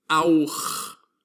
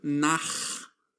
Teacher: the guttural CH that is emitted in the throat. It sounds like the sound of dog makes.